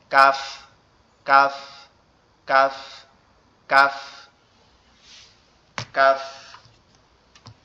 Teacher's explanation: কফটা হচ্ছে আমাদের জিহ্বার গোড়া, উপরের তালুর সঙ্গে লাগবে, লেগে উচ্চারিত হবে কফ।